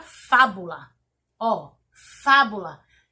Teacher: logo eu entendo que a sílaba tônica da palavra fábula é o Fá